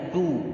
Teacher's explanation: Jadi menipiskan dan dimonyongkan bibirnya, du. Nah, ini baru boleh monyong, du, sama-sama dimonyongkan bibirnya dari rumah semuanya, du. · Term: indimamus syafatain